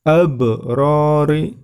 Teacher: Kemudian selanjutnya abrori yang berwarna hijau, di situ terdapat ba, huruf qalqalah, ba sukun. Maka cara membacanya harus memantul.